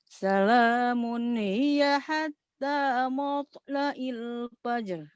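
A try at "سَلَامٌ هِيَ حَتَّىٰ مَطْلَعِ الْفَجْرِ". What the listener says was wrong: Di mimnya jangan mat. Kepengaruhan O, jangan O. Hatta maut, jangan mot. Salamun.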